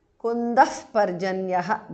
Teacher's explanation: Visarga changes to upadhmaniya.